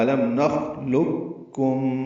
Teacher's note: ان دونوں قوف اور کاف کا آپس میں ادغام ہوگا۔ یہ ادغام کامل ہے